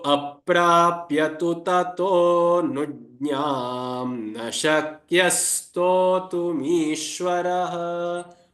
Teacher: Tato, O is the swara, and so you very slightly elongate it. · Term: avagraha